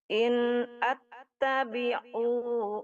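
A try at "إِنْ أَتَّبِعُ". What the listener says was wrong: Dia nggak panjang, Bu.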